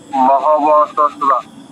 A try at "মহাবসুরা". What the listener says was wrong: আচ্ছা, কাছাকাছি গেছেন, একটু ভুল হয়ে গেছে। বিসর্গের জায়গায় পুরুটা বসালে হবে না, হসন্ত বসাতে হবে। অটা বাদ দিন, থেকে অটা বাদ দিয়ে দিন। বাহওয়াসুরা, ওয়াহওয়াসুরা, এরকম।